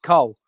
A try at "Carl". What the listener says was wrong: is Carl. C-A-R-L. Carl. Cole. There's a W in it. There's no W in Carl.